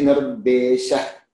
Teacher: Some people actually criticize us because of this, because they say that Nirdeshaha, that visarga should not be uttered fully, especially in Kerala, etc.